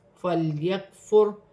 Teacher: را ساکن ہے اور را ساکن کو موٹا پڑھا جائے گا، را ساکن سے پہلے پیش آ رہی ہے